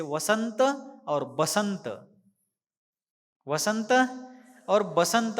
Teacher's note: के कारण उस प्रांत का नाम ही बिहार पड़ गया है हिंदी भाषा में व और ब का उच्चारण लगभग एक साथ बहुत से जगहों पर किया जाता है